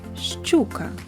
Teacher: літера щ завжди передає два приголосні звуки ш ч